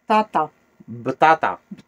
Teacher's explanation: en darija ou en arabe, on n'utilise pas le P. Le P devient B.